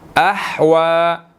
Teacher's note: واو کے اوپر کھڑی زبر ہے, اس کو ہم نے 1 سیکنڈ کھینچ کر پڑھنا ہے